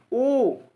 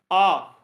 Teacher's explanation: आ में वृत्त के आकार का नहीं बन रहा है।